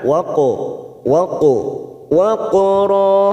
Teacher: qaf sukun qalqala sugro kita pantulkan